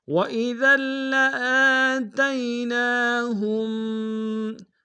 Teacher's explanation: لام کے ساتھ الف مدہ، الف مدہ کے اوپر کھڑا زبر ہے، اس کو ایک دار میں کھینچیں گے